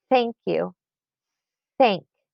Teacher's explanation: So it's coming right out the mouth. The teeth are slightly biting the tongue. But there's not anything going on in your vocal cords. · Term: unvoiced TH sound